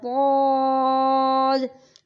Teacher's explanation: ضاد کو بھی ہم موٹا کر کے پڑھیں گے